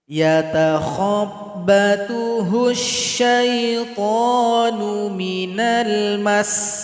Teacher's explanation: Kemudian pada ayat 275, cara berhenti pada huruf sin yang bertasydid, sukunkan huruf sin, tekan huruf mim ini kepada huruf sin. Berikan bunyi angin atau bunyi vokalnya, tekan di sini.